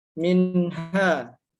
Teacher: Jadi minha, enggak boleh ada dengung dan juga harus dibaca jelas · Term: izhar halqi